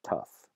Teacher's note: gh is lost completely in other environments and other cases that that fricative is not dropped completely but rather change to a different fricative to an F sound